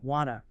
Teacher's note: The final T sound in want often disappears entirely when it's followed by another consonant sound